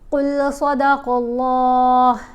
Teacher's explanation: قل صدق اللہ، یہ جو علامت ہے نا یہ کف، اس کا مطلب ہے کہ یہاں پر ٹھہرنا بہتر ہے، وقف کر لینا چاہیے۔ صاد اور قاف کو ہم نے موٹا پڑھا، اللہ کی لام کو بھی موٹا پڑھا جائے گا۔ یہ جو لفظ اللہ ہے اس میں یہ جو لام ہے اس کو کچھ جگہوں پر موٹا پڑھنا ہوتا ہے، کچھ جگہوں پر باریک پڑھنا ہے۔